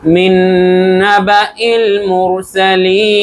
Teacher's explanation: কিন্তু আমরা যদি থামি তাহলে মুরসালিন হয়ে যাবে এবং তিন আলিফ টান হবে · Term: মাদ্দা আরজি